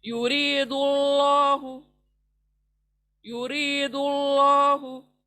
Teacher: دو پیش آیا، اس لیے ہم اللہ کو پر پڑھیں گے، یرید اللہ، یرید اللہ۔